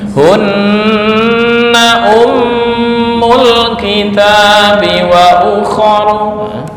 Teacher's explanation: nun yang bertasydid atau mim yang bertasydid dibaca gunnah, ditahan sampai 2 atau 3 ketukan.